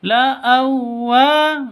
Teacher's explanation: jadi wawu tasydid itu jangan didengungkan